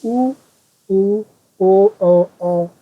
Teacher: इनके उच्चारण में ओष्ठ की आकृति वृत्ताकार हो जाती है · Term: वृत्तमुखी